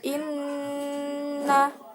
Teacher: inna itu bacaan hunah musyaddadah dibaca dengung